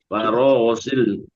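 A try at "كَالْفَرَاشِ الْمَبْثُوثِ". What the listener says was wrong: lamnya sudah betul. Shinnya. Shinnya Bu ya. Shinnya.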